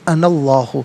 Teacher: نون پر زبر ہے، اسے اسم اللہ کے حرف لام کے ساتھ ملائیں گے، درمیان میں سے الف یعنی حمزہ کو حذف کیا جائے گا